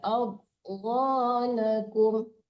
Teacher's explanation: Adghanakum tebal tapi nggak boleh mantul ya.